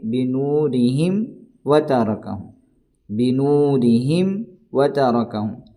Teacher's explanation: ذہب اللہ بنورہم وترک، یہاں بھی میم ساکن کے بعد با میم کے علاوہ جب بھی کوئی حرف آ جائے تو اظہار شفوی ہوگا۔ ہم یہاں میم کو ظاہر کر کے پڑھیں گے